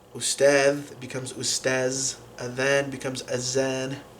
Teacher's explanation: a lot like with other dialects of Arabic, the thal becomes a z sound